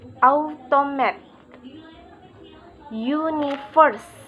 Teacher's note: When this prefix from a three-syllable word, there is usually primary stress on the first syllable, followed by an unstressed syllable and secondary stress on the third syllable.